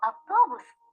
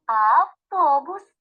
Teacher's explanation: під час вимови звука А повітря не зустрічає перешкод проходить вільно йому не заважають ні губи ні зуби Ні язик ні піднебіння